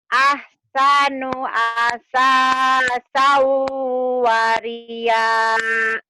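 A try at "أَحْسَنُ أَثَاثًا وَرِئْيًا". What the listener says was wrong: waria mah bencong teteh. Wari ya, bukan waria. Ya, bukan waria tapi wari ya. Wari ya. Ahsanu asasa wari ya.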